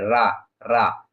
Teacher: रा बोलेंगे तो क्या होता है जीभ कंपित होती है तो इसी को बोलते होते हैं प्राकंपित वर्ण प्राकंपित या लुंठित व्यंजन लुंठित यानी पीछे की ओर लुड़क जाती है।